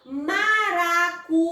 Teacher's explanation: Quando eu falo maracujá, eu percebo que o já, além de eu pronunciar com mais força, eu demoro mais, o som ele é mais prolongado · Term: sílaba tônica